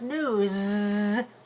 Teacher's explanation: this word news with Z voicing at the end